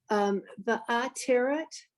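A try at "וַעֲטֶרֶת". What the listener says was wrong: The accent's on the last syllable, the ateret. You got the words right, just the accent.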